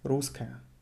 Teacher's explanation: You write it with double S, but pronounce it with one S.